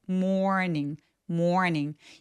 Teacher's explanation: R이 있어서 모음이 조금 더 길게 표현이 되는 습관이 있어요